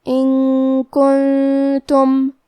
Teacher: کلمت کنتم کاف حروف الاخفاء میں سے ہے اور اخفاء کا معنی ہے چھپا دینا، تو ہم نون ساکن کو چھپاتے ہوئے اور غنہ کے ساتھ یہ حکم کو ادا کریں گے